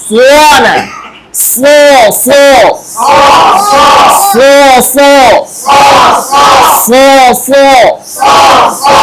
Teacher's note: ধারালো একটা আওয়াজ সো সুন্দর করে সো সো সো সো সো ঠোঁট স্বাভাবিক ঠোঁট গোল না